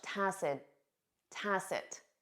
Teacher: you won't hear that final T in spoken English